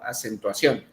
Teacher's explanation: la sílaba tónica es la on, es la que pronunciamos más fuerte